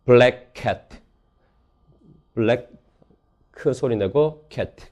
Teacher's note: 블랙캣을 각각 자음을 발음해주면 자음 중복이 일어났다고 해서 제미네이션이라고 부르고요. 블랙캣, 블랙 크 소리 내고 캣 그렇게 소리 내는 경우.